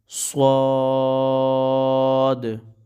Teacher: صاد پر ایک تو مد ہے، اس کو کھینچ کر پڑھیں گے، دوسرا اس کو سیٹی کی آواز میں نکالیں گے